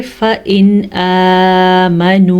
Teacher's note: फ़इन आमनू, फ़इन फ़ा ज़बर फ़ा, हमज़ा ज़ेर नून इन, फ़इन लंबा किसी भी लफ्ज़ को नहीं करना, नून पे गुन्ना नहीं होना, क्योंकि नून साकिन के बाद हरूफ़ हल्की में से हमज़ा आया हुआ है। तो यहाँ पे इजहार का कायदा हो रहा है।